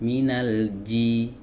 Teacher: Ini nggak boleh, minal ji, bukan ci. Jadi tidak ada angin yang didorong keluar, disemburkan keluar. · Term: huruf jim